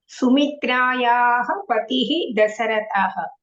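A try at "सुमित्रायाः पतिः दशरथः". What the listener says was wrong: ఉత్తమం.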